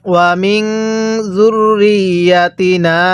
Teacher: এই নুনের মধ্যে গুন্নাহ করবেন।